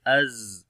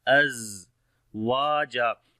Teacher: On the za we make rakhawa quality, the continuation of our sound, as we say az. And also the sift safir here we apply az waja.